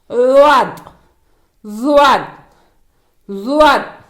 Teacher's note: இது நாவின் இடப்பக்க ஓரத்தில் இருந்து உச்சரிக்கப்படுகிறது